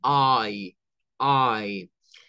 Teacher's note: este sonido es una mezcla de una a con una y corta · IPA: /aɪ/